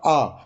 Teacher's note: हमारा मुख सर्वाधिक खुलेगा आ। तो ये हो गया विवृत स्वर।